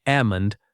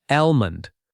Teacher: Number 14 is almond. Many native speakers drop the L sound. It sounds like ammon, not almond.